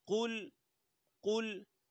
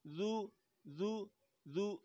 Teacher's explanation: واو میں ہونٹ گول ہوں گے